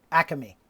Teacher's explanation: if you're in the philadelphia area though there's a grocery store called acme and you have to pronounce it acame three syllables